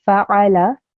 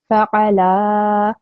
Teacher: I have to pronounce the fa, ayn, and the lam only for 1 second or 1 count